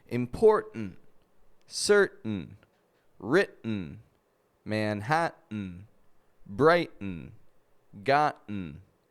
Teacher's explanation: the T is moved from its regular position just behind our teeth to the back of the throat and is made with the glottis